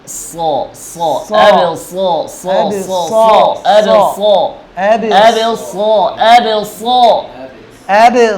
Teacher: জিবার আগা সামনের নিচের দাঁতের পেট